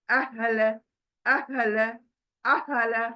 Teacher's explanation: हा गोल हा सीने से आएगा